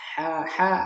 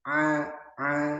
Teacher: Yang bagian tengah sini agak ditekan. A a ha agak dikasih udara. Kalau a udaranya enggak ada. Nah, ini bagian adnal halq, paling bawah dari tenggorokan.